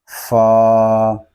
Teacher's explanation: فا جو ہے یہ اوپر کے دانتوں کے کنارے اور نچلے ہونٹ کے تر حصے سے ادا ہوتا ہے